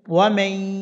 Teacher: ইয়া আসছে গুণনা করতে হবে এই গুণাটির নাম ইদগামে বা গুণনা ইয়ার উপর কিছুক্ষণ দেরি করে নাকে নাকে উচ্চারণটা করতে হবে